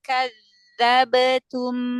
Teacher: tapi suaranya Jangan dinaikkan ya biar dia tipis karena Kaf huruf tipis